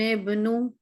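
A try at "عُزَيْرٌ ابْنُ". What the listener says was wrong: बा पे कलकला करेंगी। निबनु, दबाए नहीं, जल्दी से मिला के हटा लें।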